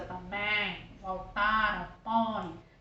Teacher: no encontro vocálico, o som é nasal. Se você fechar o nariz, ó, também, voltaram, põe, sai bem nasalizado, assim, bem grotesco, né? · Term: ditongo decrescente nasal